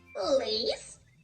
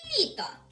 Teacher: в слові лис звук л твердий, а в слові літо звук ль м'який